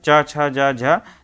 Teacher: तो जो च वर्ग की ध्वनियाँ हैं च छ जा झ, तो ये सभी जो है तालव्य में आएंगी